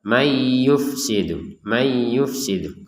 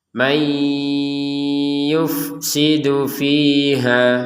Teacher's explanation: dimasukkan Nun kepada ya disertai dengung dengungan